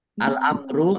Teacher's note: Masuk dengan tidak mendengung langsung masuk ke huruf lam dan tidak mendengung. ditandai lamnya ada tasdidnya lamnya dibaca dobel